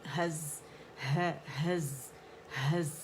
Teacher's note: اس کا رخاوہ اور اس کی سیٹی ہم نے وسلنگ ساؤنڈ شو کرنی